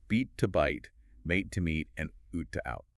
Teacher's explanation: the pronunciation of long vowels shifted entirely upward in the mouth